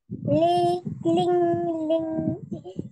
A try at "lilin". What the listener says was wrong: Mana ada ling? Hitam ni?